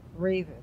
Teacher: And the second one is two dots over the resh. So the accent's on the first syllable, revu. Revu, the trope mark tells you where it is.